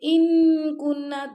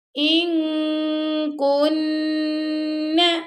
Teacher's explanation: نون کی آواز ظاہر ہو جائے گی، تو ایسے نہیں پڑھنا، ہمیں تو اخفا کرنا ہے نا، نون کی آواز کو چھپانا ہے